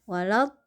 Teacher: Jadi naber ini adalah tekanan ya, tekanan pada huruf tertentu atau pada kalimat tertentu sehingga huruf itu suaranya menjadi sedikit lebih naik. Jadi dalam melafazkan waladdallin ya, itu panjang dulu 6 harokat, kemudian masuk di lam itu ada naber sedikit, nah kemudian langsung mat arid lisukun.